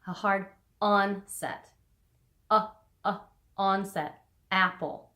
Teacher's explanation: glottal attacks on the vocal cords and that is a hard onset